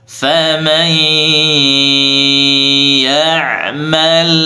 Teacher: idgham bi gunnah juga. Nun sukunnya dimasukkan ke huruf ya. Faman bi gunnah disertai dengan suara ke hidung.